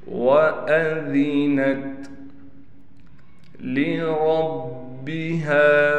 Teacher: را کو با سے ملائیں گے، را کو موٹا بھی پڑھا جائے گا، با پر تشدید ہونے کی وجہ سے ٹھہراؤ کریں گے، ہا پر کڑا زبر ہا کے بعد الف آنے کی وجہ سے ہا کو 1 الف کی مقدار کھینچیں گے۔